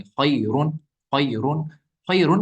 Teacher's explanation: अगर हम यहाँ पे रुकेंगे नहीं, सीधे पढ़ेंगे खैरुन, खैरुन, खैरुन, अगर सीधे पढ़ा तो तब इस रॉ को पुर पढ़ेंगे, तब इस रॉ को बारीक नहीं पढ़ेंगे। बारीक कब पढ़ेंगे, जब वक्त करेंगे तो ये साकिन बन जाएगा, तो रॉ साकिन से पहले या ही साकिन आ गया।